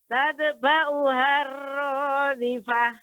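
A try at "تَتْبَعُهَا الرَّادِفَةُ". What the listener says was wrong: Ta yang sukun tidak boleh memantul Ibu, tidak tate, tapi tat. Sifatnya adalah hamas. Tat.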